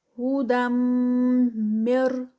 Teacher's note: ہودم، آگے پھر یہ جو ہودم ہے یہاں پر ہم اس کو ادغام کریں گے اور ادغام آئے گا ود غنہ، کیونکہ آگے جو ہے وہ میم مشدد ہے